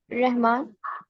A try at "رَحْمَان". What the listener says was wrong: اس کو را کے اوپر آپ زبر پڑھیں، زبر ذرا اے پڑھیں، اے. ہاں آر اے پڑھیں، آر اے. رحمان. R E کے ساتھ نہیں بلکہ اوپر ہے را. رحمان. رحمان. نہیں یہ رہ نہیں ہے نا، آر ای نہیں ہے، یہ آر اے ہے نا. رحمان.